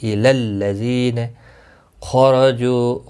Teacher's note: خاء مستعلیہ ہے، پر پڑھا جائے گا، را زبر کی وجہ سے پر پڑھا جائے گا